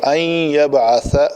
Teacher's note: نون ساکن ہے، اس کے بعد یرملون میں سے یا آ رہا ہے تو اس کو شد ملے گی